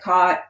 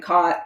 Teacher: your speech has what's called the low back vowel merger